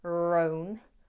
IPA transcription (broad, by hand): rəʊn